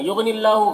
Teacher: غین کو پر پڑھیں گے، حروف مستعلیہ میں سے اور اللہ کے لام کو باریک پڑھیں گے، کھڑا زبر ہے، الف مدہ کی طرح ہے، اسے ایک الف کے برابر کھینچیں گے۔